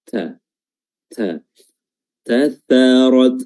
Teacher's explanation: Dan huruf ta juga memiliki sifat hams seperti huruf kaf tadi, ya. Jadi bersamaan dengan dia keluarnya suara huruf ta, kita keluarkan juga udara atau anginnya